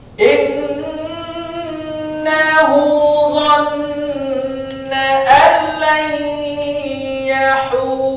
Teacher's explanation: Kemudian dhanna dengung. Dhann tahan.